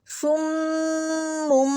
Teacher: صاد جو ہے وہ موٹا پڑھا جاتا ہے اور سیٹی والا · صُمٌّ بُکْمٌ عُمْیٌ فَہُمْ، صُمٌّ پہ دیکھیں صاد موٹا اور سیٹی والا، میم تشدید ہے، اس پہ ہم کیا کر رہے ہیں، ناک میں آواز ٹھہرا رہے ہیں، اس کو کہتے ہیں گنہ کرنا